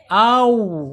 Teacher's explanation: wawu ini secara makhraj ada di asyafatain ya, asyafatain.